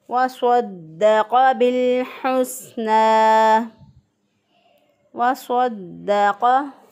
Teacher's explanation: मोटा पढ़ते हुए होंठ जो हैं वो गोल नहीं होंगे, सिर्फ ज़ुबान जो है वो ऊपर के तालु की तरफ उठ जाती है। हरूफ की अदायगी के वक़्त ज़ुबान ऊपर के तालु की तरफ उठ जाना ये मोटे हरूफ में होता है।